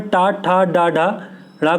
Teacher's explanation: इनका जब हम उच्चारण करते हैं तो जीभ जो होती है वो तालु के ऊपरी भाग को स्पर्श करती है, तो इन्हें मूर्धन्य व्यंजन कहा जाता है।